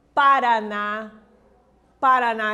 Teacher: tem a sílaba tônica a última por isso é chamada de oxítona